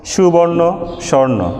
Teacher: মধ্য স্বরলোপ যদি শব্দের মধ্যে কোনো স্বরধ্বনি লোপ পায়, যেমন সুবর্ণ, স্বর্ণ। সু এখানে হ্রস্ব উ ছিল, একটি স্বরধ্বনি ছিল যেটি পরবর্তীতে লোপ পেয়েছে। যেহেতু এটি শব্দের মধ্যে লোপ পেয়েছে এজন্য এর নাম হচ্ছে মধ্য স্বরলোপ।